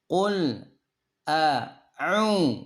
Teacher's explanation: Nah, perhatikan hamzah dengan ain ada beda. Hamzah itu di pangkal tenggorokan, ain itu di tengahnya. Jadi beda. Jadi jangan jadi satu hurufnya.